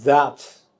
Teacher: You also see that the final D has become T